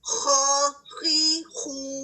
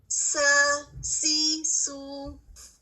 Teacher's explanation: خواہ کی صفت میں بھاری پن اور موٹا پن ہے، اور اگر آپ خواہ کو ساکن کے ساتھ ادا کریں تب بھی یہ بھاری رہے گا اور متحرک صورت میں بھی بھاری رہے گا.